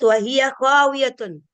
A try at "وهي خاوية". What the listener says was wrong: Ya, kha. Ya, makhrajnya sedikit lagi.